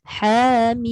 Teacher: Ha tu jangan lebih, 2 harakat sahaja sebab itu adalah mad asli.